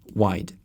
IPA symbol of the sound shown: w